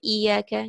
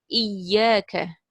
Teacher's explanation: You don't say iyaka, you don't say e, you don't make it a mad. You have to do nabr. Iyaka. Then over here, ghayya or ghayyan, ghay.